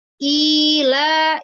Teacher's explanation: Mad dibaca 2 harokat panjangnya.